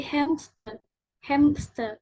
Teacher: menyisipkan tanda berhenti tak bersuara di antara sengau dan frikatif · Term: insersi